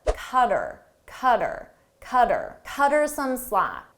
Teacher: Her, him, and them, we often shorten these. So her, I get rid of the H sound and it sounds like er. But then I combine it to the word before